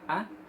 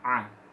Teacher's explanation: A biasa. Yang kedua ada ain, agak ke dalam, makharijul hurufnya agak ke dalam.